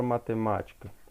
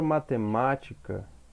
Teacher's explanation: Olha que a antepenúltima, ela está sendo a sílaba tônica, ok? Então isso vai me dizer que ela é uma proparoxítona.